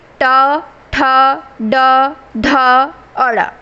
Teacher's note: फिर है ट वर्ग। ट वर्ग का उच्चारण होता है मूर्धा से।